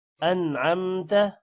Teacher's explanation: یہاں پر نون پر غنہ نہیں کرنا کیونکہ آگے حروف حلقی عین ہے